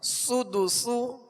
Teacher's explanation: دونوں سین میں سختی کی آواز ہوگی، یعنی سیٹی کی آواز ہوگی، سختی سے ادا کریں گے اور باریک پڑھنا ان کو